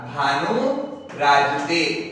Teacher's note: भानु plus राजते, यहां पर भी देखो विसर्ग से पहले कौन सा स्वर दिया गया है, उ दिया गया है, विसर्ग से पहले क्या दिया हुआ है, ह्रस्व स्वर उ दिया गया है, तथा विसर्ग के बाद में क्या दिया हुआ है, रे दिया गया है। तो ये जो उ है वो तो हो जाएगा बड़ा उ, और विसर्ग का क्या हो जाएगा, लोप हो जाएगा। तो जब हम इसे मिलाएंगे तो मिलाकर के ये पूरा क्या बनेगा, भानु राजते।